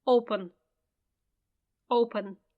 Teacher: because the stress is on the first syllable